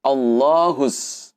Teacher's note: Sehingga huruf alif lamnya tidak perlu dibaca, langsung masuk ke huruf shadnya. Dan shad di sini teman-teman ini ditasdid sehingga double ya